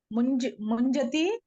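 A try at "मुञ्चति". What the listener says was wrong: Munchati, not ja, cha. Munchati.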